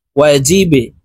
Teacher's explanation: ওয়াও জবর ওয়া, জিম বা জেরে জিবে, বা কলকলার হরফ নিচের দিকে ধাবিত করে ধাক্কা দিয়ে উচ্চারণ করব